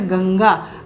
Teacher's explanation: जैसे यहाँ पे गंगा, गंगा में अ के बाद न की आवाज़ आ रही है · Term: अनुस्वार